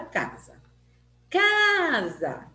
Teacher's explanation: sílaba cá foi pronunciada mais forte mente que a sílaba Zac então sílaba cá é a sílaba forte